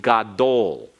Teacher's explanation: gadol is accented on the last syllable. We have two syllables in it.